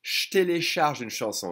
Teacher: drop the E and try to connect the J and the T, and it'll be turned into a sh. Je télécharge une chanson.